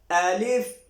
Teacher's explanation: الف جھٹکے کے ساتھ اور منہ کھول کے اس کو ہم نے پڑھنا ہے